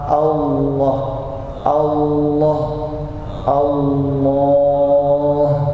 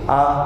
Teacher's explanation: Lam itu kan tebal, sedangkan A tipis